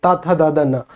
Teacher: हमें महसूस होता है कि जिब्या दांतों को छू रही है। त थ द न तो ये दंत को दंत के द्वारा बोला जाएगा।